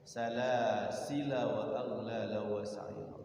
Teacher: lam yang kedua itu walaupun tulisannya panjang tapi dia dibaca pendek